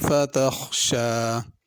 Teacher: فتخشا خا کو پر کرنا ہے، شین کو کھینچ کے پڑھنا ہے، الف کی طرح پڑھنا ہے، اس کے اوپر کھڑی زبر ہے۔